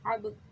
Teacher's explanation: با پہ ساکن آ گیا تو یہاں پہ قلقلہ پڑھیں گے، قلقلہ کریں گے، یعنی کہ قلقلہ والا حرف ہے۔